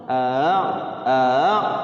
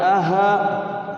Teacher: Hamzah yang kedua itu dibaca ringan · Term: tashil